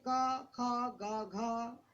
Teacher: आपकी जीभ को कहीं नहीं लगना पड़ा, जीभ की क्रिया नहीं है। · काखा गाघा का स्थान कंठ, अंगा का स्थान कंठ और नासिका